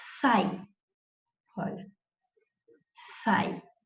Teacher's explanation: você tem os dois fonemas vocálicos na mesma sílaba. Isso já te conta que você tem um encontro vocálico e que esse encontro vocálico é o ditongo, dois na mesma sílaba.